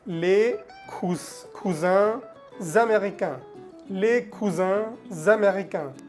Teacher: La S de cousin la conectamos con la palabra américain. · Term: liaison